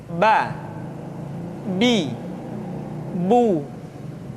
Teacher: Yang kedua, huruf Ba. Huruf Ba dikeluarkan dengan cara merapatkan kedua bibir kita.